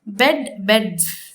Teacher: you will be adding the plural morpheme s at the end of it, but it is articulated in a variant form, and that is z